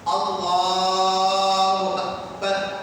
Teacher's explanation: آپ جو اللہ کی لام ہے نا اللہ، اس کو کھینچ سکتے ہیں، اس کو کھینچنے کا مسئلہ نہیں ہے، لیکن نہ تو آپ الف کو کھینچ سکتے ہیں نہ تو اکبر کی با کو کھینچ سکتے ہیں۔ اللہ اکبر یہ صحیح ہے، لام کھینچ گیا صحیح ہے، اللہ اکبر، اللہ اکبر یہ غلط ہے۔